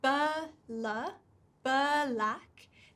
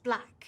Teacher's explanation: you have to be very careful not to put a vowel in between them. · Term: consonant clusters